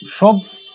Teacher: আগেরটা ছিল কি যে যুক্ত ব্যঞ্জনের সঙ্গে জফলা যুক্ত, আর এটা হচ্ছে শুধু বর্ণে যুক্ত হওয়া, সেটা মাঝে বা শেষে যদি যুক্ত হয় সেই ক্ষেত্রে কি হয় জফলা দ্বিত্ব হয়, দুবার উচ্চারিত হয়। পদের মাঝে বা শেষে যদি জফলা থাকে তাহলে সেই জফলা দ্বিত্ব হয় বা দুবার উচ্চারিত হয়।